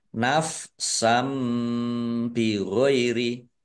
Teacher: fathah tanwin bertemu dengan huruf ba bacaan iklab ya dibaca membalik fathah tanwinnya dibaca mim. Nafsam bi ditandai dengan mim kecil berdiri.